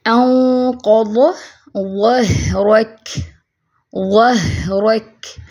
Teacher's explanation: دیکھیں نون ساکن کے بعد قاف آ گیا، اخفا ہیوی ہوگا، ٹھیک ہے۔ انقض ظہرک، ظہرک، اب ہاں پہ دیکھیں صفت رخوہ ہے، آواز چلے گی، کاف ساکن ہو جائے گا تو اس پہ بھی کمزور سی آواز چلے گی۔